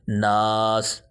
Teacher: اب یہ جو ناک میں آواز جا رہی ہے یہ غنہ ہو رہا ہے، اور جہاں نون مشدد میم مشدد آئے گا وہاں ہمیشہ غنہ ہوگا۔